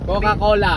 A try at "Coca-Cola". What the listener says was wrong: O nagdikit pa yung labi mo. Bigkasin mo lang papa ng natural. Papa hindi, natural lang yung paano mo siya pronounce. Papa hindi.